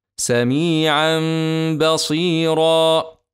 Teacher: اتى بعده حرف الباء نجد فتحه واحده فقط وبجوارها حرف الميم فنقلب نون التنوين الساكنه ميما مخفاه ونغني حركتين